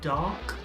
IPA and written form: dɑːk (Dark)